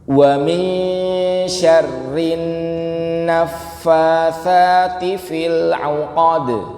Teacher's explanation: Pertama nun sukun ketemu shin, hukumnya ikhfa hakiki. Yang kedua ada nun tasydid, namanya gunnah.